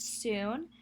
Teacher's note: are already rounded in anticipation of the random vowel oo so the normally unrounded s becomes rounded due to the phonetic environment created by the vowel and the rounded s creates an allophone of the s phoneme